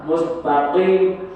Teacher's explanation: qof itu lebih ke dalam sana di pangkal lidah